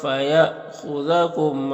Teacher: یہاں پر حمزہ ساکن ہے تو جھٹکا لگے گا، خا حروف مستعلیہ میں سے پر پڑھیں گے